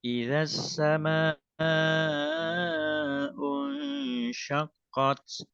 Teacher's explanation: Suaranya agak agak mengarah ke hidung ya